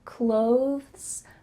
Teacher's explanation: When native speakers are speaking a little bit slower, they might add a TH sound, clothes, clothes. You see how my tongue comes out a little bit for that TH? Clothes. But really, when we're speaking quickly, it just sounds like close, close.